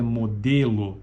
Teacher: esta segunda vogal tônica oral ela é uma anterior não arredondada média alta